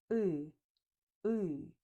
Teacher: Your tongue is pulled back, not forward. Your lips are relaxed, not rounded. The sound is produced deep in the mouth. You can think uh is like e pulled back or like without lip rounding.